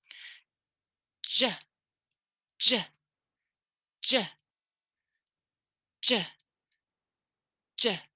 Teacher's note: So for j, it's going to be j equals the voiced pair for t, which is d, and the voiced pair for sh, which is zh